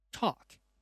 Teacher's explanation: press the tip of the tongue against the upper gum and the airflow burst out